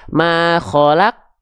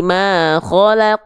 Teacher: huruf q itu perhatikan dia punya sifat namanya qolqalah alias memantul